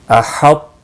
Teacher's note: پہلا تو موٹا ہو رہا ہے اور بغیر قلقلہ کے، اور اگلا تا باریک اپنی حرکت کے ساتھ پڑھا جا رہا ہے